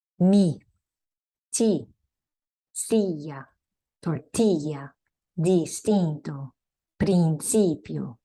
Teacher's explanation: The I is pronounced E, as in ski, but shorter.